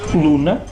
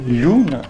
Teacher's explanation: as palavras que em latim começavam por L, o som L, em mirandês palatalizaram, ou seja, deram lhe.